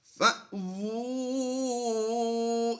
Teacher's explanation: حمزہ ساکنہ کی وجہ سے ہم نے جھٹکا دیا ہے. واو الٹا پیش وو کی آواز دیں گے، او کی نہیں دیں گے.